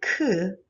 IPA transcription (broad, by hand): k